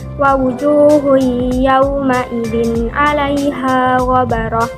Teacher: tanwin bertemu dengan huruf ain. Jadi membacanya harus jelas tanpa disertai dengan dengung. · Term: izhar